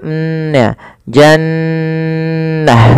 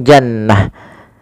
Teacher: Nun tasdidnya kita namakan dengan bacaan gunah cara membacanya adalah suara nunnya ditahan dulu